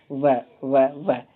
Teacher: दांत और ओष्ठ से बोला जाता है। जब आप व को बोलेंगे दांत और ओष्ठ ओठ से बोलेंगे। यानी कि ऊपर का दांत और नीचे का ओठ। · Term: दंतोष्ठ